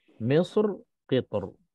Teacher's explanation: Tapi bagi saya kedua-duanya lebih mudah tebal. Sebab ta tu tebal, ra bila kita berhenti dia lebih senang untuk tebal.